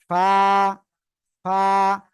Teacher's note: উপরে দুই দাঁতের আগা নিচের ঠোঁটের পেটের সাথে লাগাতে হবে এই যে লাগিয়ে হালকা বাতাস বের করে উচ্চারণ করতে হবে ফা